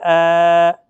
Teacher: حمزہ اور ہا انتہائی حلق سے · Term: حمزہ کھڑا زبر